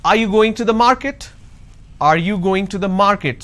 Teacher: so when i say are you going to the market there is a rising tone